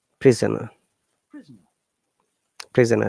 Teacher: There is two schwa sound in prisoner. You see the prisoner, the O after S and E after N.